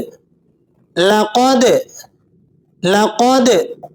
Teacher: دال پر جزم کی وجہ سے آپ نے اس کو قلقلہ کے ساتھ ادا کرنا ہے۔ قلقلہ کہتے ہیں حرف کو پلٹتی ہوئی آواز کے ساتھ پڑھنا۔